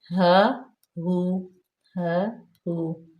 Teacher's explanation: ہا جو ہے وہ اس کا مخرج واضح کریں، یہاں پہ ہا پہ زبر تھی اور اس ہا پہ پیش ہے